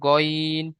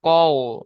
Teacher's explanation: এটি গাইন বলা হবে না, এটা হবে গইন। পুরো অক্ষর আছে, মুখ গোল করে পড়তে হবে।